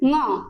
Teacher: ऐसा लगता है कि ध्वनि का जो उच्चारण है वह नाक के द्वारा हो रहा है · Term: नासिका